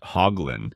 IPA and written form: ˈhɒɡlɪn (Hoglin)